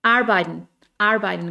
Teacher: casi no suena r